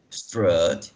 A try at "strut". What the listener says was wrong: Só atenção, porque essa é uma vogal curta. é um short vowel. Então, não dá para falar strut, né? É só um tempo.